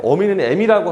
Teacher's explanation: 원래는 어가 이렇게 후설모음이잖아요. 그런데 이렇게 전설모음 쪽으로 이동을 하게 되죠. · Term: 모음동화